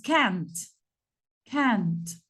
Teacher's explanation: Cuando pronunciamos el negativo, tenemos que alargar el sonido de la A.